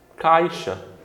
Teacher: o A vogal, o I semivogal. O som, ele decresce. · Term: ditongo decrescente